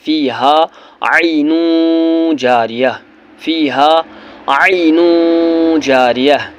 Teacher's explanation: یہاں پر تنوین ہے، دو پیش ہے تو دو پیش کو تنوین بولتے ہیں، دو ضرب دو زیر دو پیش کو تنوین بولتے ہیں۔ تنوین کے بعد جیم، اور جیم حرف اخفا ہے، اس لیے یہاں پر اخفا کرنا ہے